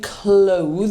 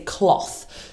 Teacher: cloth with an unvoiced th. So we don't say clo, we say cloth.